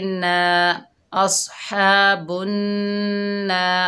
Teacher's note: ये अलिफ मद्दा है, 1 अलिफ की मिक़दार खींच कर पढ़ेंगे